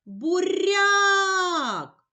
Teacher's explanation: Буряк. Наголос падає на другий склад, на склад ряк.